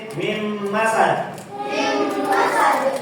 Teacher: Huruf nun dimasukkan ke huruf mim kemudian ditahan dua harakat ya.